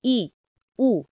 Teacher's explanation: জিহ্বার উচ্চতা অনুযায়ী স্বরধ্বনির বিভাজন উচ্চ স্বরধ্বনি ই উ জিহ্বা সর্বোচ্চ উপরে ওঠে